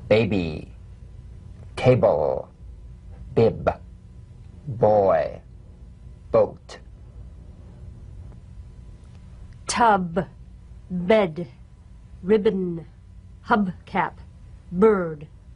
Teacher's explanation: voiced pulsation on the lips like a delicate, crisp tap.